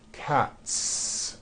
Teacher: Again, the S ending is unvoiced.